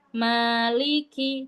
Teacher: maa di sini baca dua harakat. Ingat satu ayunan. Maliki. Jangan malik ki.